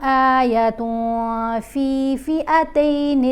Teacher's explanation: آیتوں، یہاں تا کے اوپر تنوین ہے، اس کے بعد فا ہے، فا حروف اخفا میں شامل ہے، تو ہم نے آیتن نہیں پڑھنا. یہاں اخفا کرتے ہوئے نون کی آواز کو ناک میں چھپا کر پڑھیں گے اور ایک الف کے برابر ٹھہر کر پڑھیں گے